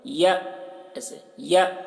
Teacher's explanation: یہ حمزہ ساکنہ ہے، اس کے پڑھنے میں جھٹکا ہوتا ہے تو جھٹکا کے ساتھ میں پڑھیں گے یا، ایسے یا ان یأتی یوم لا بیع، یہاں پر اخفا ہو رہا ہے، تنوین کے بعد حروف اخفا میں سے فا ہے تو بیع فیہ ولا خلۃ۔